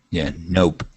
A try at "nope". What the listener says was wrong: Yeah, so instead of nop, it is nope.